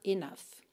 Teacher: Então enough é n o u g h, mas o som é enough, com som de f mesmo no final